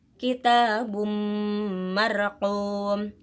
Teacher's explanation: domatain yang bertemu dengan huruf mim, maka cara bacanya memasukkan dengan dengung